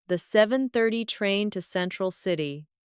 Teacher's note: Do you notice how to almost disappears? It blends into the next word sounding like to central city.